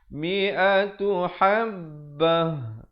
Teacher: ta marbutah bila kita waqaf dibunyikan ha.